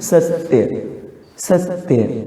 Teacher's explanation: स तो लघु है लेकिन आधा ता या के साथ ना जाकर ऐसा लग रहा है कि सा के साथ जा रहा है, जैसे बोल के देखिए सत्य, सत्य ना, तो ऐसे में ये सा दो मात्रिक हो जाएगा ऐसा।